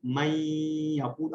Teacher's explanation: نون کی sound drop ہو جاتی ہے. صرف ایک اس کا اشارہ یہی باقی رہتا ہے کہ یہاں پر ہماری ناک کی طرف سے آواز آتی ہے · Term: غننے کے ساتھ مرج